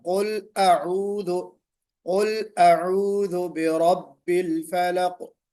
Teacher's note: تو قل اعوذ، پھر برب الفلق، را کو موٹا پڑھنا ہے۔ قل اعوذ میں عین جو ہے وہ اور حمزہ دونوں کو واضح پڑھنا ہے